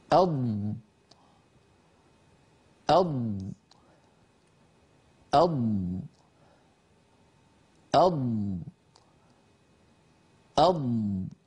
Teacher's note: صوت الضاد وانه يمتد لانها حرف رخو وايضا اللسان يتقدم الى الامام ويربوا الهواء يربو الصوت المحبوس والمحجوز خلف اللسان فيستطيل صوت بمعنى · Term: حرف الضاد